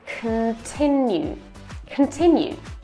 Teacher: The schwa is between k and n, so no need to pronounce it and just say k-n. K-n. Make the k nice and soft, just whisper.